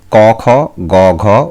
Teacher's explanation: জিহবার পশ্চাৎ ভাগ তালুর পশ্চাৎ দিকের নরম অংশ বা স্নিগ্ধ তালুতে শ্বাসবায়ুকে বাধা দিয়ে যে ধ্বনি সৃষ্টি করে তাকে স্নিগ্ধ তালব্য ধ্বনি বলে